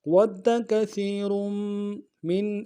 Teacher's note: را کو موٹا ادا کرتے ہوئے میم کے ساتھ ملانا ہے ، میم کے اوپر تشدید زور دیں گے۔ وَدَّ كَثِيرٌ مِّنْ